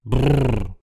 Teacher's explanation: Les consonnes roulées, appelées vibrantes ici, sont produites par des vibrations multiples entre les deux organes d'articulation. La consonne roulée bilabiale, j'adore, c'est brrr.